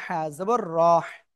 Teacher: রর উপরে জবর মোটা হয়ে পড়তে হবে